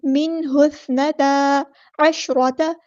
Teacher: سا کو نرمی سے ادا کرنا ہے اور سا ہمیں سیٹی نہیں آنی چاہیے